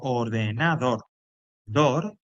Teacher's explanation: Cuando digo ordenador dor en este caso sería la sílaba tónica porque es la que más suena